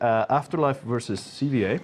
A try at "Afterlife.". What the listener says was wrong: Dot, isn't it? It's the one time you didn't pronounce the dot, or you like call it the dot.